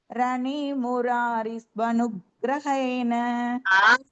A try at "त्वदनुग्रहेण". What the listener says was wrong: துவதனுக்ரஹேண. தனியா சொல்லும்போது சொல்றேன், சேர்த்து சொல்லும்போது வரலையே. திருப்பியும் துவனு தான் சொல்றேன்.